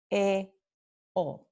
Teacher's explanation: Para pronunciar estas dos vocales, la lengua no tiene que subir y no tiene que bajar. Entonces, la lengua se mantiene en su posición neutral para pronunciar E, O. Y esta es una posición media. No es ni alta ni baja.